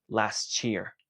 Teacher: termina con t la siguiente Inicia con es sonido de Y estos dos sonidos se van a unir y van a generar el sonido de ch